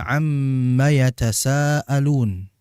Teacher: di mim bertasydid ya di situ kan bersifat ghunah ada dengungan yang keluar dari mim · ada dengungan yang keluar dari mim. Maka ketika kita pencet hidung ini, ya, akan berhenti suara. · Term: gunnah